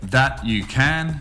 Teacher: can also has the schwa or weak form which is ken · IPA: ðæ jə kən